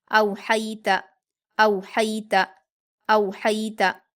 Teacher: तो आप पहले से देखकर बोलेंगे हमज़ा पर वाउलीन है। हा पर या लीन है और इसको हम हलक से अदा करेंगे नरम आवाज़ के साथ जल्दी। और ता पर हरकतें जल्दी पढ़ेंगे।